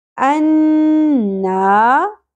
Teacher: الف حرف مدہ، نون مشدد پہ غنہ